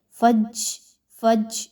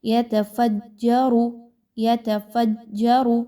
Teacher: یاد رکھیے جیم میں سیٹی کی آواز نہیں آنی چاہیے، فج، فج یہ آواز نہ آئے، ٹھیک ہے۔